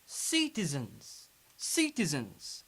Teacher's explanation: So we pronounce final S Z because it's preceded by N.